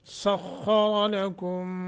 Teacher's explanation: لکم ادغام مال غنہ، اسے ادغام مثلین بھی کہتے ہیں